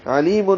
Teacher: علیم میں عین وسط حلق سے نکالیں گے. لی یا مدہ ہے، 2 حرکات لمبا کریں گے.